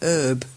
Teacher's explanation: And I replied, another bit of fun is that there is sometimes a difference between American English and British English. In American English, the H in herb is silent.